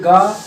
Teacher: आप कहेंगे ग तो कम वायु निकली, तो इसको अल्प प्राण में।